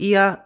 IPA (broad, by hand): ia